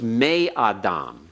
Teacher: Before gutturals, the nun is assimilated. The hirik heightened to a tseri because the gutturals refuse. They reject doubling.